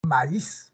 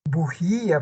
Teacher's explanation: abierta es la tónica tiene más o menos esta fórmula pero en el hiato acentual la vocal cerrada es la tónica